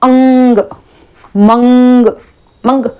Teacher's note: जब हम अंग की मात्रा करते हैं तो हमेशा हमारी जो होगी नाक से आवाज आएगी